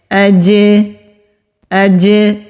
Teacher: قلقلہ کہتے ہیں آواز کے پلٹ کر آنے کو، جب ہم بول کو زمین پر پھینکتے ہیں تو اس کے اچھلنے سے جو آواز پیدا ہوتی ہے وہ پلٹ کر آتی ہے، بالکل اسی طرح جیم ساکن ہو تو اس کی آواز بھی پلٹ کر آتی ہے، اس کو قلقلہ کہتے ہیں۔ اج، اج، یہ جو اینڈ میں آواز آ رہی ہے اس کو قلقلہ کہتے ہیں۔